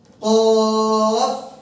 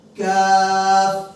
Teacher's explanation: কফ হচ্ছে জিহ্বার গোড়া উপরে তালু, কাফ হচ্ছে জিহ্বার গোড়ার একটু উপরে, সেই বরাবর উপরে তালু